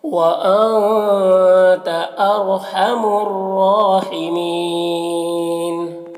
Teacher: व अंता नून में इख़्फ़ा होगा, और रॉ को पुर पढ़ेंगे